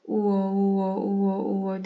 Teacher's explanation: u ve o harfinin birleşimiyle oluştuğu için yavaş söylendiğinde uo hızlı söylendiğinde vo u u u u diye söyleyin kendiniz vo sesi çıkacak o